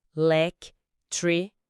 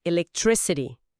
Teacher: A sílaba tônica principal está ali no tric.